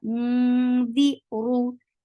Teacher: Mu, and this is light ikhfa because dal is among light letters. Di oru, ru is heavy. The sound is short. · For fatha, open your jaws, and then there is idgham with gunna.